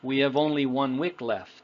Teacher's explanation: We have only 1 week left versus we have only 1 week left. Now you'll notice how the subject we and have are crunched together. We call that blending together.